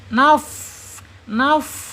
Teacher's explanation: Fa ini kaidahnya atau aturannya yaitu ujung seri bagian atas ya, ujungnya ya, ujung seri bagian atas menyentuh perut bibir bagian bawah